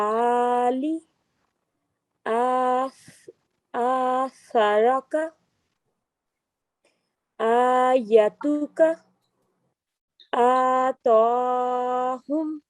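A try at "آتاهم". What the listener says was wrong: ये ता है, ये सीधी, ठीक है, तो मोटी नहीं है ये. जी आप ये आखिरी लाइन में जो ये पहले दो लफ्ज है, इसमें आप निशानदेही करें ये कौन सी स्ट्रोक है. ये अलिफ के ऊपर.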